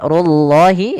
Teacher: di sini runya tebal, Allahnya pun tebal